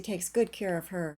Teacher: her at the end of the sentence did not have a silent H because I said that word with stress